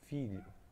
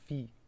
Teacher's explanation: o I está bem enfático, bem presente, a sonoridade está limpa e original do I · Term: vogal